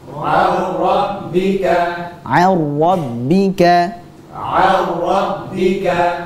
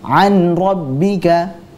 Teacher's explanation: ada hukum bacaan yang mengharuskan dia memasukkan nun sukun tersebut ke huruf ra.